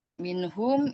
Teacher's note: nun sukun bertemu dengan huruf ha, idhar halki dibaca dengan jelas